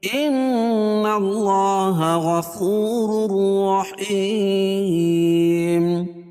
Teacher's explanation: ان نون مشدد ہے، اس میں غنہ ہوگا